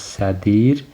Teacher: Üç dənə samit yanaşı gəldiyinə görə dr-ın arasına bir i əlavə olunacaq